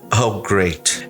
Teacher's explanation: E ao mesmo tempo eu usei uma entonação de que saco